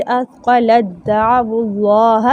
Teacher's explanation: ता की सिफ़त बाकी नहीं है, ता दाल में अच्छे से मुदग़म हो गया